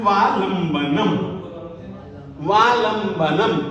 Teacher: ल के बाद में जो उच्चारण करेंगे आप अनुस्वार का, वो आधे म के रूप में करेंगे